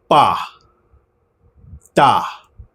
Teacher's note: તા બોલશો તો એ વખતે તમારી જીભ દાંતને અડી · પા બોલતી વખતે તમારા બંને હોઠ ભેગા થાય છે અને હવાને રોકે છે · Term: કોન્સોનન્ટ